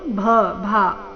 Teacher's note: ಭ ಭಾ ಚೆನ್ನಾಗಿ ಮಹಾಪ್ರಾಣ ಸ್ಪಷ್ಟವಾಗಿ ಕೇಳಿಸ್ಬೇಕು